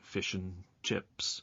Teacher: the word and is often pronounced n in phrases like fish and chips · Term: weak pronunciation